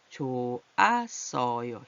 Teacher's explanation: 히읗 소리는 소리가 안 나는 거예요. 그래서 좋았어요. 히읗은 아예 소리가 안 나요.